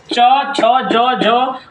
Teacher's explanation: इन सभी वर्णों का उच्चारण स्थान तालू है